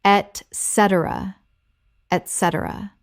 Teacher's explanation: Four syllables with the stress on the second. It begins with et, not ec. · 4 syllables with the stress on the second. It begins with et, not ek. Example. The brief covered the basics, timelines, budgets, deliverables, etc., and everyone left clear on expectations.